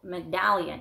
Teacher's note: if you want to say medallion, the accent is on the second syllable